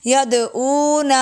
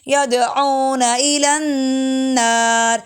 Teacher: نون کو بھی لمبا کرتے جو کہ بلا وجہ لمبا ہوگا، نون بالکل لمبا نہیں ہوگا